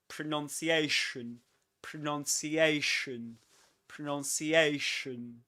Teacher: It begins with a schwa, so that's why you nearly open your mouth. You barely open it.